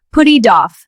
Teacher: The t becomes a soft d sound. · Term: linking words